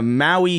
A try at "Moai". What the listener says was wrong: you're saying, no, Maui. That's spelled like Hawaii. Maui. Moai or M-O-A-I are the weird statues on Easter Island.